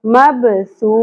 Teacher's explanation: سو دونوں جگہوں پر سا ہے، سیٹی کی آواز نہیں آنی چاہیے